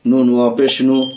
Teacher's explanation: الف یا واو، واو ساکن سے پہلے پیش ہو تو واو مدہ ہوگی، واو مدہ کو تھوڑا کھینچ کر پڑھیں گے۔ معروف پڑھیں گے، مجھول آواز سے بچیں گے۔